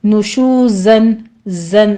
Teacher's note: ہے ہونٹ گول کرنے ہیں آگے واو مدہ ہے نشوزن زن زی کی آواز سیٹی کی آپ نے پورا آواز لے کر آنی ہے